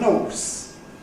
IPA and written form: ɔːs (horse)